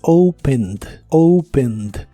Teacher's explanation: Es muy similar a la forma del presente, pero en el pasado se le agrega la terminación ED, aunque solo se pronuncia la D